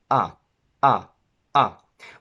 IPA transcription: æ